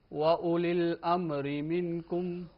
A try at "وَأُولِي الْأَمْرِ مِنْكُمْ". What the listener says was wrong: وَأُولِي الْأَمْرِ مِنْكُمْ، امری اس میم کو جھٹکا نہیں دینا، جنبش نہیں آنی چاہیے۔ قاف، طا، با، جیم، دال، قطب جدید، ان 5 حروف کو پڑھتے وقت جنبش و جھٹکا ہوتا ہے،